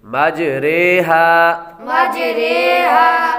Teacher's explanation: یہ دوسرا جز ہم نے امالہ پڑھا تھا، یہ اس کی وضاحت ہے کہ یہاں پر را کھڑا زیر ری نہیں بلکہ اردو کے لفظ قطرے کی را کی طرح پڑھیں گے